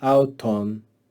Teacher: See how that accent goes down in the second syllable?